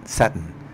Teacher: sudden with the pronunciation of the glottal stop